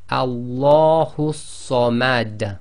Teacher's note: the dal that is carrying the dhamma becomes sakin, and because it's one of the qalqala letters, then it's read with an echo